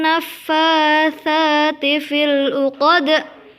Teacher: harus dipantulkan karena juga merupakan bacaan qalqalah kubra di mana ada huruf dal